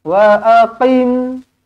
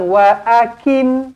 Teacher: pastikan baca Kaf ni tebal